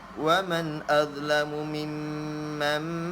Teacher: Waman dha ni pun dia keluarkan sedikit lidah. Waman dia ada sedikit lidah keluar, sama seperti za dan juga tha.